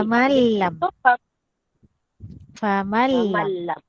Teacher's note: Famalam, jangan dengung di lam.